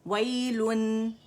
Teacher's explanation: आपकी जो लिप्स की जो गोलाई है वो ख़त्म हो जाएगी, जो हम दम्मतैन के लिए रोल कर रहे हैं वो ख़त्म हो जाएगी।